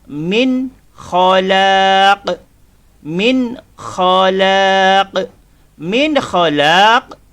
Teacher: cara bacaannya ialah jelas dan tidak dengung ingat jelas dan tidak dengung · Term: izhar halqi